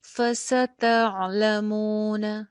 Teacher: ف س دونوں کے اوپر زبر ہے، لمبا نہیں ہونے دینا